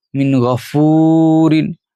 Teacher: یہاں بھی آواز نہیں نکالیں گے ناک سے کیونکہ غین حروف حلقی میں سے ہے